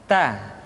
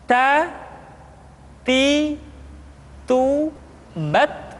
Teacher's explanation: huruf ta keluar dengan menyentuhkan ujung lidah kita dengan gusi-gusi gigi seri bagian atas